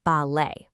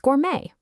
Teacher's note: You don't pronounce that t at the end. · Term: silent consonant